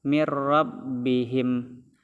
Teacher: nun sukun atau nun mati disambut roh tasdid, itu hukumnya adalah idgham bila gunnah